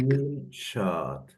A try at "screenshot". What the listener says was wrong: Even a little quicker on that second part. Screenshot. Screenshot. And my voice goes up, down. Screenshot.